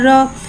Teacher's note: रॉ के ऊपर ज़बर है, ज़बर को मुँह खोल के अदा करके पढ़ेंगे और रॉ पे ज़बर है, लिहाजा यहाँ रॉ को मोटा अदा करके पढ़ेंगे